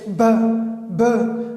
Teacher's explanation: B is the symbol for the sound B, and it is bilabial. It is pronounced from both of the lips.